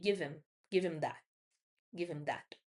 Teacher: o that também termina com t ali, bem seco